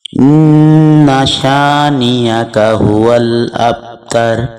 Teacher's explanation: اس سے اگلی آیت میں پھر نون مشدد ہے، غنہ ہوگا، اور با کے اوپر قلقلہ ہوگا ہلکا سے، کیونکہ درمیان میں آ رہا ہے حرف، تو قلقلہ ہلکا سے محسوس ہوگا۔